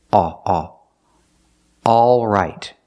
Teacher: The first vowel is the sound ah, ah, like in words call and ball. The sound is back here, ah, ah, all right.